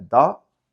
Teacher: Quitar la S, en una parte se dice do, con una vocal muy abierta